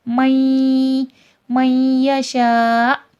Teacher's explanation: حمزہ پہ جزم ہے، حمزہ کے وقف پہ جھٹکا آئے گا